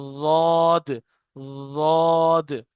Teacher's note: जबान का किनारा ऊपर वाले दांतों, ऊपर वाली दाढ़ों में हल्का सा टच होता है बस, और निकलता है ये रॉद, रॉद।